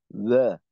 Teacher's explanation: ওয়া ঠোঁট গোল করে আর জবরের কারণে শেষের দিকে খুলতে হবে। ওয়া এই আওয়াজটায় ঠোঁটের দুইটা অবস্থা, শুরুতে গোল, শেষে খোলা।